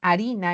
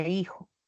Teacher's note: la f inicial latina se dejó de pronunciar y fue sustituida por la h en la escritura